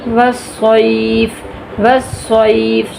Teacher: صاد کو موٹا کریں گے، یہ یا لین ہے، اس کو کھینچیں گے نہیں